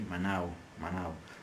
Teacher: And it is pronounced with a slight W sound, so we say manao, manao.